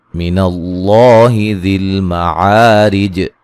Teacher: ذل مع الف مدہ ہے، رج را کو باریک پڑھا جائے گا، وقفاً جیم پہ قلقلہ کر کے پڑھیں گے واضح طور پہ